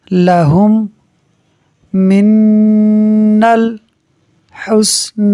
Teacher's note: میم ساکن کے بعد دوسری میم ہے، ادغام شفوی ہوگا، ملا کر پڑھیں گے تو غنہ کریں گے۔ لہم من الحسن، یہاں نون مشدد کی وجہ سے غنہ ہو رہا ہے، یہاں ادغام شفوی کی وجہ سے غنہ ہو رہا ہے، تو یوں اس لفظ میں دو جگہ غنہ ہوگا۔